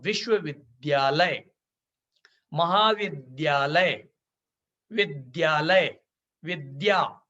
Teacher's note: इसका उच्चारण धा की तरह नहीं बल्कि द्या होना चाहिए क्योंकि यह आधा दा और या के मेल से बना है